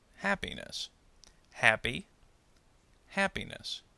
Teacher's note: maintaining patterns for example the suffix ness and the word happy when we add ness the stress does not change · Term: stress maintaining